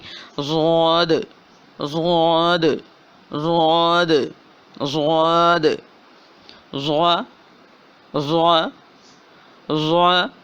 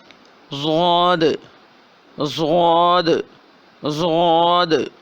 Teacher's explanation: بہت موٹی آواز ہے اس کی، اور نرم اور جماؤ کے ساتھ اس کو پڑھیں گے